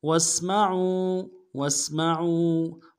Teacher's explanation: کی سیدھی باریک ہوگی، میم کو نرم سے ادا کریں گے، عین کو موٹا کرتے واؤ کے ساتھ ملانا ہے، واؤ مدہ ایک اعتدال میں کھینچیں گے · سین کی سیدھی باریک ہوگی، میم کو نرم سے ادا کریں گے